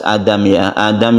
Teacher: Adam ini a-nya ini disebut dengan mad badal ya bacanya satu Alif mad badal Badal artinya ganti yang asalnya itu adalah aamu menjadi